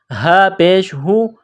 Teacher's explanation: یہ گول ہا ہے، منہ سے ہوا نکالنے کی طرح اس کو پڑھیں گے